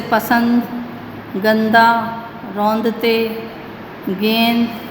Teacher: तो इसी में सब में अनुस्वार का प्रयोग हुआ है। ये एक तरह से नासिक के व्यंजन होगा, इसकी जो ध्वनि है उच्चारण करते समय वो नाक से निकलती है